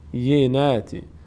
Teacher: روی این کلمه مشاهده میشه خیلی از بینندگان در تلفظ بینات کمی روی تشدید مشکل دارن. دو بار یا تلفظ میشه، دو بار، یک بار به همراه با بی، یک بار خودش به همراه کسری که داره